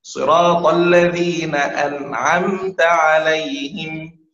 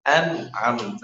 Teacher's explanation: الإظهار طريقته لا شيء، لا عمل للسان، لا عمل للشفتين، لا عمل للأنف، لا توجد غنة، لا يوجد إدغام، لا يوجد إخفاء.